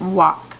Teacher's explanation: You don't hear the L. It's silent.